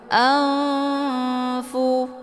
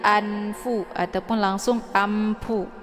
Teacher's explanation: posisinya ujung lidah sementara Fa posisinya di dua bibir cara bacanya nunnya disamarkan kemudian siap-siap menuju ke huruf Fa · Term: Ikfa